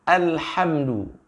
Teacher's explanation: lamnya itu istifal, maka dibaca dengan suara yang tipis. Nah, ini sering hadirin yang jamaah para sahabat-sahabat ummah, kita sering mendengar ya, alhamdu ini sering terbaca dengan bacaan yang tebal ya.